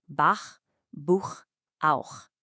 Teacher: it's a back sound made deep in your throat.